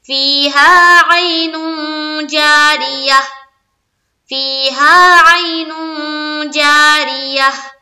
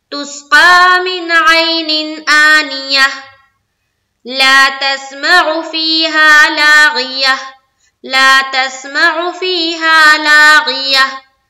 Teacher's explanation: गोलता पर वक्फ किया तो हाय साकिना बन जाएगी